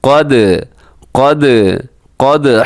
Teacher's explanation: قاف زبر دال قد, دال باریک ہے قاف موٹا ہے, قد نہیں بلکہ قد قد قد.